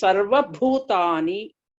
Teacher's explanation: Bha is Mahapran there. So you have to stress and pronounce.